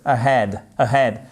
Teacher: accent tonique sur la seconde syllabe